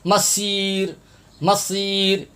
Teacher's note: یہ صاد کے اوپر آپ گول دائرہ دیکھ رہے ہیں، یہاں پر اکثر حضرات سین پڑھتے ہیں، سیٹی کی آواز نکالتے ہیں